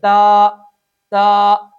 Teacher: number 4، بعض لوگ اس حرف کو ادا کرتے ہوئے اس کے آخر میں حمزہ یا ہا یا پھر ہا کی آواز پیدا کر دیتے ہیں، چنانچہ وہ پڑھتے ہیں تا تا، جھٹکا دے کے پڑھیں گے اور حمزہ پیدا کر دیں گے